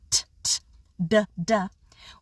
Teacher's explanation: For the T and the D sounds, t, t, d, d, we make those sounds at a place called the alveolar ridge, or the area right behind our front teeth.